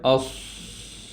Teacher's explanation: آواز چلتے چلتے نیچے کی طرف جا رہی ہے، اوپر کی طرف نہیں جا رہی، اوس، کچھ سمجھ آ گئی بات۔ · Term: ہمس